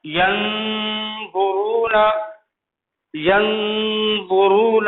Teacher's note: یہ دیکھیے نون ساکن ہے، اس کے بعد دو آ رہا ہے، حروف اخفاء میں سے ہے، دل لگے گی، دل لگا کے پڑھیں گے ٹھیک ہے کہ اخفاء. ینظرون، ینظرون اخفاء ہوگا، ناک میں چھپا کر کے پڑھیں گے